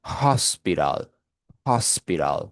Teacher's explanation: El el en la epíglotis es la única consonante que es glotal y se pronuncia de la siguiente manera. Es como si usted estuviera dando como que un suspiro, ¿vale? Por eso que usted dice hospital, hospital, ¿okay?